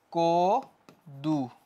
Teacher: অ change হয়ে ও হয়ে গেছে